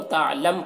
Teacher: یہاں پر وقف کریں گے تو تعلم پڑھیں گے، میم کا پیش سکون سے بدل جائے گا